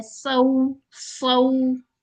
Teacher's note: इसको आपने लंबा नहीं करना, सऊ नहीं कर देना, सिर्फ ये नरमी से अदा होगा। लीन लेटर आ गया।